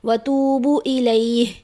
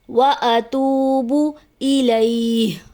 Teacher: عموماً یہاں پہ ایک کامن مسٹیک یہ بھی ہوتی ہے کہ استغفار کی دعا کے دوران اس کو اس طرح سے پڑھ دیا جاتا ہے زمبن و، زم بن و، جو کہ درست ادائیگی نہیں، درست ادائیگی ہے ذنبیوں و۔ اتوبو، حمزہ پہ زبر ہے، اس کو واضح کر کے پڑھنا چاہیے، اور واو مدہ ہے، واو مدہ کو ایک الف کے برابر کھینچ کر پڑھا جاتا ہے۔